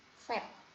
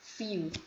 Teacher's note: Labiodental ini adalah bunyi-bunyi yang terbentuk dari upper teeth, ya, gigi bagian atas, and the lower lip, ya, jadi perpaduan antara gigi bagian atas dan bibir bagian bawah, ya.